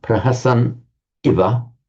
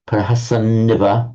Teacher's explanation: And remember that rule that where we have a word ending in a short vowel and n, followed by another vowel, by a rule of sandhi, that n doubles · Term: doubling of the n